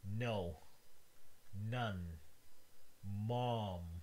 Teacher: If it's open, some of the air rushes into your nasal cavity and then exits through your nose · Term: Nasal consonants